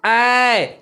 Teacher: ओठ जो हो रहा है वो फैल रहा है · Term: आवृतमुखी स्वर